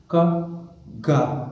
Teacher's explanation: Okay, soft palate. And place of articulation is velar, but manner of articulation is plosive or stop